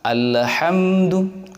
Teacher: Kemudian pada ayat yang kedua, yaitu Alhamdulillahi Rabbil Alamin, ada sebagian imam sholat berjamaah memantulkan pada huruf lam yang ada pada kalimat alhamdu dan lam mati yang ada pada lafal al-alamin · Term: pantulan yang tidak perlu